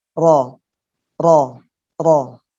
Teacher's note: Kalau lam tadi rapat, kalau ro ujungnya pinggir-pinggirnya nempel, tapi tengahnya ada ruang untuk keluarnya suara di situ sehingga menjadi getar. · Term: sifat takrir